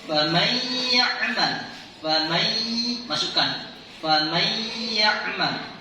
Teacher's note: Nunnya, nun matinya, nun sukunnya dimasukkan ke dalam huruf ya secara berdengung. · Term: idgham biguna